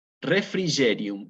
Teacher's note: Dulcis hospes anime, dulce refrigerium, y aquí aparece otra vez la G con la E, que hay que acordarse, la tenemos que pronunciar como una Y